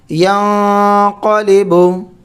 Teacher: نون ساکن میں اخفا کرتے ہیں، جس کا قاعدہ ہمارا گزر گیا تختی نمبر 10 میں۔ حروف اخفا میں سے قاف ہے، نون ساکن کے بعد قاف آ گیا، اب یہاں پر اخفا کریں گے۔